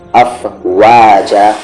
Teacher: آیت سے پہلے اگر دو زبر ہو تو اس میں سے ایک زبر ہٹ جاتا ہے، افواجا، الف ویسے ہی باقی رہے گا، یہ نہیں کہ آپ نے الف کو بھی ختم کر دیا، افواجا۔ اور یہاں پر واو میں آپ کو لپس راؤنڈ کرنے ہیں، افواجا، نہ کہ آپ کہہ دیں افواجا، افواجا۔